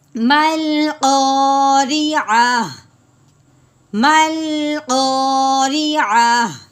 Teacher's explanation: گول تا ہے تو وقف کی صورت میں تا کو ایک دفعہ ہٹا دیتے ہیں، پیچھے کیا رہ جاتا ہے ہا، تو ہا کی بات نکالتے ہیں.